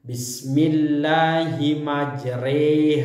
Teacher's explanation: bacaan ini berarti membaca fathah yang condong ke kasrah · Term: imalah